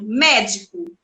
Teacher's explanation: médico, a acentuação é na antepenúltima